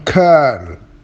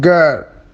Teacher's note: produced with the back of the tongue touching the soft palate